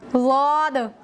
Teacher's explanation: जबान की करवट ऊपर की दाढ़ों से मिलकर अदा होता है